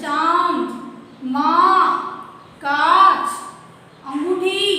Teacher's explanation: फिर है हमारा ये वाला अनुनासिक, जिसमें चंद्र बिंदु है। अब अनुनासिक के अंदर इसका उच्चारण मुंह और नाक दोनों से होता है।